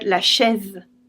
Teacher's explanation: a vowel is always flat there is no diphthong or long sound